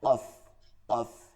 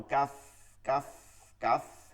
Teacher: কাফ হরফের উচ্চারণের পার্থক্য হচ্ছে হালকা, একদম নরম ভাবে, হালকা ভাবে হবে, হালকা আওয়াজে এবং চিকন থাকবে। আর কফের উচ্চারণ হচ্ছে ভারী আওয়াজে, মোটা, মোটা এবং ভারী দুইটা হবে, চিকনও হবে না, মোটা হবে আবার ভারী হবে।